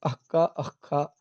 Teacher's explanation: का और खा से पहले अर्ध विसर्ग की तरह लिखे जाने वाले अथवा उच्चरित होने वाले जो वर्ण हैं उनको जिह्वामूलीय कहते हैं।